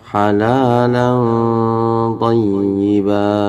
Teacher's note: Ini tetap disentak teman-teman ya, thayyiba. Ditahan juga sedikit, kurang lebihnya gitu 2 harokat. Jangan buru-buru pindah.